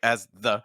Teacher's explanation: So very strong separation between as and the. It's like as the, which is kind of a punchy sound.